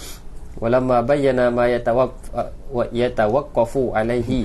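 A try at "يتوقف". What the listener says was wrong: Itu bukan yatawaffaq ya, yatawaqqaf.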